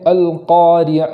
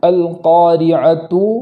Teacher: اور آخر میں جو تا ہے اس کو ہم وقف کی حالت میں گول تا کو ہا سے بدل دیتے ہیں